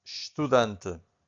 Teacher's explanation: the only thing that you can hear from the first syllable, it's a sh